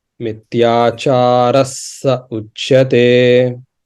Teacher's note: when visarga is followed by sa, we pronounce it as a double sa